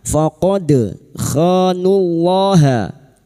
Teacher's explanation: dal sukun yang mati asli di tengah kalimat qalqalah sugro, jangan lupa dipantulkan. Faqad khanullaha, kha fathah diikuti alif 2 harokat mad tabi'i. · Faqad khanullaha, kha fathah diikuti alif 2 harokat mad tabi'i. Nullaha lam jalalah yang didahului dhammah dibaca tafkhim.